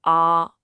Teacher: The first character on is a high flat first tone. It's like a sustained note.